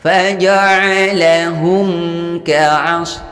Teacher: Maka dibaca dengan jelas atau terang. Hukum bacaannya izharus syafawi, tidak boleh mendengung. Faja'alahum ka'as, dan tidak boleh dipanjangkan.